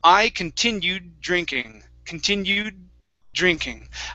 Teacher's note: continued drinking present tense past tense I continued drinking continued drinking I go to that D but I do not finish it it's a half D and I finish it with the word drinking continue drinking that's